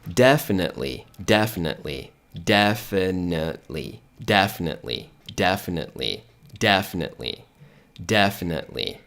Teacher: Então você vai simplesmente ignorar esse E aqui, ó. E o T quase não sai. Você posiciona a língua para pronunciar o T, mas o som não sai